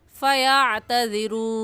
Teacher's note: 3 अलिफ की मिकदार खींच कर पढ़ेंगे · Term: मद्दे वक़फ़ी